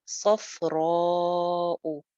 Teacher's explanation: صفراء، مد ہے اس کے اوپر. کیوں آ رہی ہے مد الف مدہ کے اوپر؟ کیونکہ آگے حمزہ آ گیا تھا. اس کو بھی دو الف لمبا کریں گے.